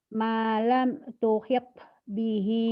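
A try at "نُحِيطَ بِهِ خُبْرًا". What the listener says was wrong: Qalqalanya mana? Tuhita. Malam tuhita bihi khubra. Malam. Manya panjang atuh, tante. Kan matobi. Malam malam tuhita bihi khubra.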